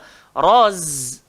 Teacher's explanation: Tak boleh roza je. Dia kena roz. Ada z. Itu desir.